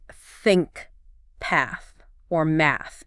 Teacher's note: like think path or math okay and what you're doing is you're putting your tongue between your teeth right and you're blowing air out okay but you're not using your voice you're not vibrating your hcal cords it's just air okay so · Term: voiceless